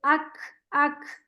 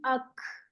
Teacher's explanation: काफ में ना एक हमस होता है यानी सांस की आवाज होती है